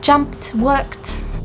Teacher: the verb ends in an unvoiced consonant, you use the unvoiced t sound